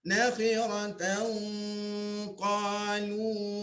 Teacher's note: Tanwin temu dengan huruf qaf ya, dengungnya ditebalkan. Nakhiratan qalu tilka idzan tak mau bunyi gitu.